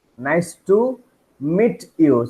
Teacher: ends with T, ta sound, and starts with Y sound, then the mixture will be cha sound.